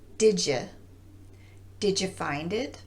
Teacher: when did gets combined with the reduced form of U which is yeah the transition between the two words becomes a j sound